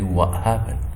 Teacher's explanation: a glottal plosive replaces the consonants